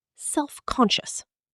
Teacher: In fast-connected speech, self-conscious. The final syllable reduces.